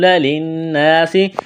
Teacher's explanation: سین میں سیٹی کی آواز پیدا کریں گے